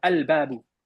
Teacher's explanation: a qamariya is when you pronounce the L. You'll hear the L. You'll literally hear the L.